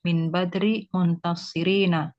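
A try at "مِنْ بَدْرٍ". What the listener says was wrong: Min badrin tanwin ya.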